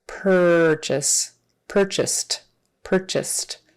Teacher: sound Pur purr like a cat purr purchase purchased purchased so the past tense has a t sound on the end even though it's spelled with an ed